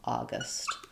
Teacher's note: we have a short schwa at the second syllable. So I would just rewrite it with a instead of a u, August.